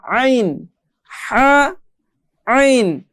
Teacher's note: এই দুইটি হরফ আমাদেরকে গলার মধ্যে চাপ দিয়ে পড়তে হবে।